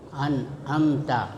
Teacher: Cara membacanya suara nun masih tetap terdengar, ya. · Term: ikhfa